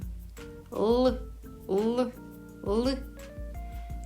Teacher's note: Звук л вимовляється за допомогою кінчика язика, який зімкнувся з верхніми зубами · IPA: [л]